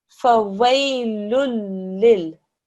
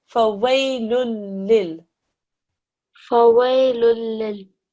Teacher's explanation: You just join it without making any ghunna sound